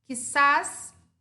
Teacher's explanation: Quizás termina em S e a sílaba tônica também é a última. Então, eu acentuo todas as agudas que terminam em N, S e vogal.